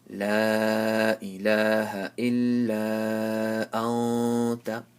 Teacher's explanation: after nun sakin, there's a ta. Ta is one of the letters of ikhfa, so you have to make a nasal sound.